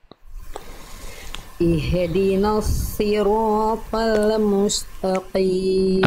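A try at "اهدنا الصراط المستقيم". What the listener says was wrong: Oke, pertama Bunda jangan ih, tapi jangan ditarik lagi, tapi lempar. Alirkan nafasnya. Nafas dan suaranya semangat. Slod. Slod itu huruf yang tebal atau huruf yang tipis? Tebal.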